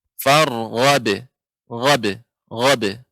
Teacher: Tidak ada hamzah pada akhir kata. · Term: qalqalah huruf ba